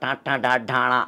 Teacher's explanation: నాలికను పై పైకి తన్నుతున్న ట ట డ డా డ అనే మూర్ధన్యాలు కావచ్చు